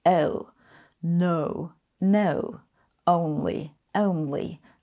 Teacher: in British English, you start close to an E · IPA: əʊ